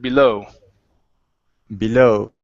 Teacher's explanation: instead of blue it's below with the stress at the end of the word